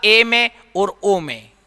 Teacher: जब ए और ओ का उच्चारण करते हैं तो हमारा मुंह जो है अर्ध संवृत स्वर के समान रहता है